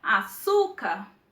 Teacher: A sílaba mais forte é su, a penúltima sílaba. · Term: sílaba tônica